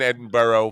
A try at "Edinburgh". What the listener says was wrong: But you don't even pronounce the g. It's just Edinburgh. Edinburgh.